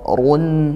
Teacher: rnya tafkhim tebal karena dia dammah atau dommatain